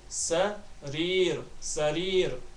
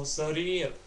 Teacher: with a light ra at the end of it